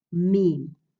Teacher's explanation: so you're putting your lips together while using your nasal passages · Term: ghunna